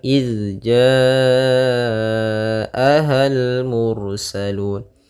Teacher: mad wajib muttasil panjangnya empat harakat